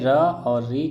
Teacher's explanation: र और ऋ का जो उच्चारण स्थान होता है वो क्या होता है मूर्धा होता है